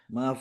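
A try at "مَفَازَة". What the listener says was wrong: Ke Z, zai. Z. Ujung lidahnya nggak usah digigit, di dalam aja. Mafaz. Ada suara lebahnya. Z. Nggak usah keluarin ujung lidahnya, di dalam aja Pak. Za. Z.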